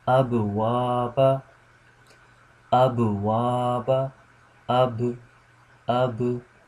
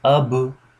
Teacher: I'm making a bouncing sound, and this is you can say this is a weak kalkala, because there are categories in kalkala.